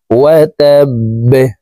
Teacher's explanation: বা যেহেতু কলকলার হরফ নিচের দিকে ধাবিত করে ধাক্কা দিয়ে বাকে সাকিন করতে হবে।